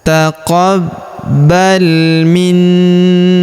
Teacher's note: Huruf na kita tahan dan kita tekan serta kita dengungkan dua sampai harakat karena di atas huruf na terdapat tanda tasydid.